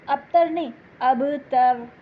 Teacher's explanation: اب با پہ کلکلا ہوگا